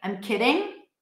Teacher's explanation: I'm probably going to say I'm kidding, like a flap D.